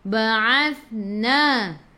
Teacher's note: Ba'athna hujung lidah keluar pada gigi depan